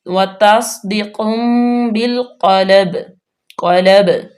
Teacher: با پہ ہم قلقلہ کریں گے